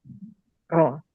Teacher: Jangan dibelokin ke roa gitu ya, tapi ro aja.